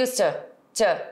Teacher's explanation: Às vezes você vai até ouvir used to, com esse som mais do schwa, que é um som, inclusive, que só tem lá, só tem no inglês, e a gente não tem esse som na nossa língua.